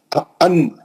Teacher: آپ کی زبان اٹھی اوپر اور اس کی نوک جا کے اوپر کے مسوڑوں کو لگی، دانتوں کے پیچھے جو ہارڈ حصہ ہے، مسوڑے جس کو بولتے، وہ ہارڈ اسپیس پہ جا کے لگی تو نون ادا ہوا۔ · نون کا مخرج جو ہے زبان کی نوک ہے اور اوپر کا مسوڑا ہے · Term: نون ساکن